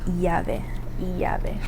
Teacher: Um, I say a so a because it does have that y sound. Sometimes um you'll hear it like y, sometimes you'll hear it like j. Um, kind of depends on the pronunciation of like the the country that the person's from.